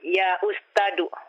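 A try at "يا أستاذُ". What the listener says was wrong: Ustadu. Zal. Bukan dal ini. Zal.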